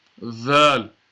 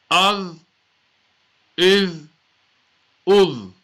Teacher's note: Tip of the tongue, yani slightly from the top of the tip of the tongue, touching the top part of the inside of the teeth